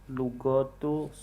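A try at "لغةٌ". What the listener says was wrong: Nah, pakai tanwin. Lugatun.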